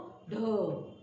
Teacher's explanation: तो ज्यावेळेस आपण ट मध्ये उच्चारात जोडतो, ट च्या उच्चारामध्ये जेव्हा आपण ह जोडतो त्यावेळेस त्याचा उच्चार होतो ठ. जेव्हा ड मध्ये आपण महाप्राण व्यंजन ह जोडतो त्यावेळेस त्याचा उच्चार होतो ढ